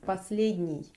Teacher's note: You can hear that it's not n here, it's н, soft one.